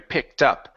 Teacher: take the T, connect it to the word up. So it's tup.